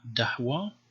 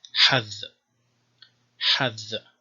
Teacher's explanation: Again, two pronunciations, the stop, d, and post-vocalic the, as in dahwa. So here it is d, dahwa, but after a vowel, more like hadh, hadh. So gold, dahwa means gold, and hadh means one, hadh.